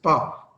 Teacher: पा में मैंने दोनों लिप्स पहले जोड़े थे, हवा रोकी थी, फिर प्लोसिव साउंड पैदा की, तो इसका मतलब एक कंप्लीट ब्लॉकेज था, फिर सडन रिलीज था, तो इसको हम कहेंगे कि ये तो कॉन्सोनेंट।